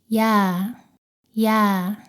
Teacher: 다음은 야입니다. 발음은 이에서 시작해서 빠르게 아로 발음합니다.